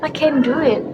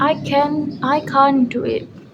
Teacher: The word can't is stressed and very clear. Interestingly, the negative form is stronger than the positive one.